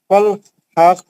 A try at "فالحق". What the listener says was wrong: نہیں پیش نہیں پڑھنا. بروکرائن تو خلخلہ کرنا.